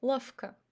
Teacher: And lavka, we say f instead of v.